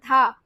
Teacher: जब आप धा बोलो आपकी जो जीभ है दांतों को टच कर रही है